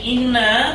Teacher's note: ইন্না এখানে জবরের বাম পাশে খালি আলিফ, মদ্দে আসলি মূলত, কিন্তু এর পরবর্তী অক্ষর হরকতওয়ালা আলিফ হওয়ার কারণে এখানে ইন্না, এই ইন্না শব্দটি না এখানে 1 আলিফের জায়গায় 3 আলিফ পরিমাণ টানতে হচ্ছে।